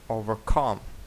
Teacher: Звісно що overcome наголос буде падати на останній склад